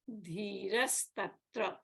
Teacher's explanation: the visarga is preceded by a vowel a, but it followed by a hard consonant ta. So the visarga becomes a sakara.